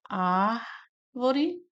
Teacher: Sílaba tônica é o ar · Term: proparoxítona